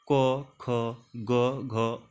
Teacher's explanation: क वर्ग में आता है क, ख, ग, घ, अंग से कंठ से उच्चारण करते हैं